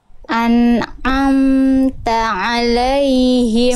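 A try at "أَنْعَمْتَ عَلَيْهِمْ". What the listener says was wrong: An'amta alaihim. Sip, tinggal diringankan ainnya Bunda. Jangan terlalu kuat. An'amta alaihim.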